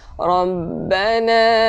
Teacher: nun yang bersabdu wajib al-ghunnah, kita wajib dengung